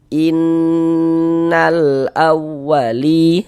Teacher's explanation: Kita gunnahkan. Jadi bagian in, nah, suaranya itu kita tahan, kita panjangkan sejenak. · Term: gunnah musyaddadah